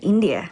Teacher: She uses a rising intonation to express the afterthought, India.